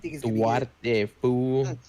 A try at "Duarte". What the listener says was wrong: I don't think you have to roll the R on that one, but I like it.